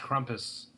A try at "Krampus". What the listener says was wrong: Why do you keep pronouncing it Krampus? Like it has a U? It's Krampus. it's spelled Krampus. It's Krampus.